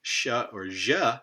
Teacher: there's this dome shape to the tongue blade the area behind the tongue tip that's creating also a narrow constriction · the tongue tip's going to be down a little bit further near the lower teeth and there's this dome shape to the tongue blade the area behind the tongue tip that's creating also a narrow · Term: non-anterior, non-anterior one